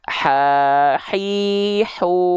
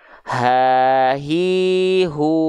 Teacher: H kecil tengah tenggorokan H besar pangkal tenggorokan